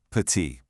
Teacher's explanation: You see it ends with a T, but we don't say petite. Nope, that T is totally silent. The sound stops right at the vowel, petit. It's as simple as that.